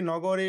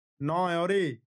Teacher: নগরের গ এই ব্যঞ্জন ধ্বনিটি অ এবং অ এর মধ্যবর্তী স্থান থেকে লোপ পেয়েছে